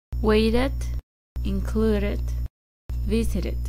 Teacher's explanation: en el inglés americano, cuando la palabra termina en vocal más T o D, se puede pronunciar como una R.